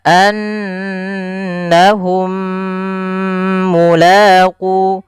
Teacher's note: Idgham mimi yaitu apabila ada huruf mim mati atau mim sukun bertemu dengan huruf mim sebelumnya, setelahnya, maka itu kita namakan dengan idgham mimi. Idgham mimi ini cara membacanya, mim yang pertama masukkan yang mim kedua, kemudian ditahan